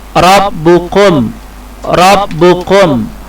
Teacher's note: hukum bacaannya harus tafkhim atau dibaca tebal